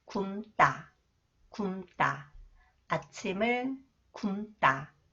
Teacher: when 디귿 comes after the final consonant 리을, 미음, it is pronounced 쌍디귿, 뜨 sound